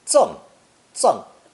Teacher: Pronounced 4th tone, 赠, 赠